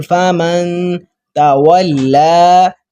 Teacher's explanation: فمن اب نون پر جزم ہے اکفا کریں گے فمن تولا واو کو لام کے ساتھ ملائیں گے لام پر شد ہے